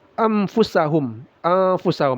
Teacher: nun sukun bertemu fa ikhfa disamarkan lalu didengungkan